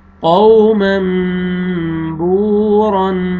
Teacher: یہ واو مد ہے، واو جزم سے پہلے پیش، با کو آپ نے کھینچنا ہے